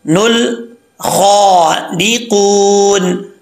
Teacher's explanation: नुल खौ डी कून, खा हरूफ मुस्तालिया में से है, इसको एक अलिफ की मकदार लंबा भी किया जाएगा, आगे अलिफ है और पुर पढ़ा जाएगा ख्वा को क्योंकि हरूफ मुस्तालिया में से है